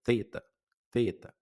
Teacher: No inglês não tem, mas ela é que representa o TH, o som do TH no inglês, então acaba sendo mais fácil para quem fala inglês, porque é como você estivesse falando um T com a língua no meio dos dentes